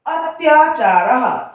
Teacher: अति प्लस आचारः, अत्याचारः, अति माने ई और बड़ा, जब हम ई और आ को एक साथ उच्चारित करेंगे तो हमारे मुंह से अपने आप ही या वर्ण उच्चारित होता है, तो अत्याचारः, ई प्लस आ बराबर या, इस तरह से उच्चारित करेंगे।